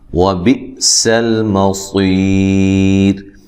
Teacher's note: یہاں حمزہ کو تحقیق جھٹکے سے ادا کرنا ہے. سین کو باریک سیٹی سے، صاد کو موٹی سیٹی کے ساتھ ادا کرنا ہے.